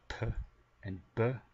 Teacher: bilabial, using both lips